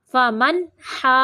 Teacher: جیم مشدد ہے اس لیے ہا کو جیم کے ساتھ تھوڑی دیر ملائیں گے۔